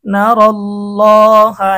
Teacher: এখানে লামকে মোটা করতে হবে, কারণ কি আল্লাহ শব্দের ডানে যদি জবর বা পেশ হয় তাহলে আল্লাহ শব্দের লামকে মোটা করতে হয়। আল্লাহ শব্দের ডানে এখানে আমরা জবর দেখতে পাইতেছি।